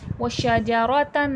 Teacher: شین میں تفشی، شین کی آواز پھیلاؤ کے ساتھ پڑھی جائے گی